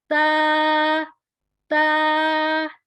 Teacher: اس میں زبان کی نوک اوپر والے 2 دانتوں کی بیک سائڈ پہ مسوڑوں کے ساتھ ٹچ ہوگا۔